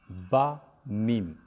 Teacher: با میم آپ دیکھیں دونوں ہونٹ کے ملنے سے ہوتے ہیں